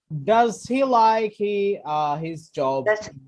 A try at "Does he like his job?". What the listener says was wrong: Very, very good.